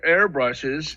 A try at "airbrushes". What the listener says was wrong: Hairbrushes, You said hair at the beginning.